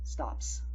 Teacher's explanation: the P sound is unvoiced. So your S will be pronounced unvoiced.